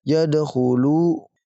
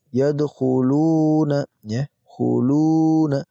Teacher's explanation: Di sini khu tanpa panjang, di sini dhammah juga tapi dengan panjang karena diikuti dengan wawu sukun.